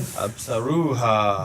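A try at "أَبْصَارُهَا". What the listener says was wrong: Stretch the saw a little bit more. Yeah, the bounce. Abasa. Absaruha.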